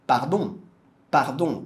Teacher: Ele termina com uma vogal nasal Central